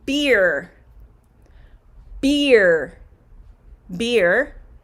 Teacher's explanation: beer is the long e sound beer it's a tricky one though because it's a diphthong